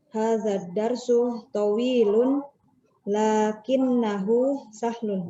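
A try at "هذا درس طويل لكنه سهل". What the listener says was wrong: Bagus. Ahsan, Masya Allah.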